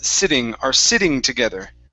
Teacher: So instead of using a normal T, saying sitting, okay, let's use a flap T here.